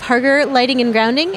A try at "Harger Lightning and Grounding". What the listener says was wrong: You said lighting?